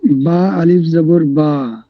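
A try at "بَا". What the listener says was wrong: টান হবে না এক আলিফ? এক আলিফ পরিমাণ কতক্ষণ? দুইটা অক্ষর উচ্চারণ করার যে সময়, সেটা হচ্ছে এক আলিফ। বা আলিফ জবর বা।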